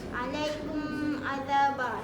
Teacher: Bunyi mim disebut dengan jelas tanpa dengung. Yang ni baru kita kena tutup mulut kita masa kita ah sebut mim tu. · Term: izhar syafawi